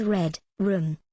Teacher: formed with the tip of the tongue raised and curled back near the Alva Ridge as in words beginning with red room they occur in words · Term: liquid